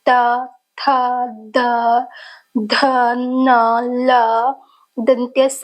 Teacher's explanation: इन वर्गों का उच्चारण करने में जीवा दंत को स्पर्श करती है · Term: दंत्य